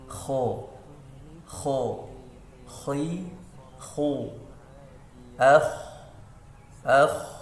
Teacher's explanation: Huruf kho itu keluar dari tenggorokan bagian atas, dekat dengan ghoin. Kho, gho. Kho itu paling belakang sekali, dia bisa ini dinding belakang kita ya.